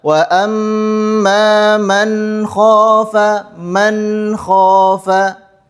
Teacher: huruf nun dibaca dengan jelas, tidak boleh ada jeda antara huruf nun dengan huruf kha. Kemudian disebut dengan halqi karena huruf kha adalah huruf tenggorokan. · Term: izhar halqi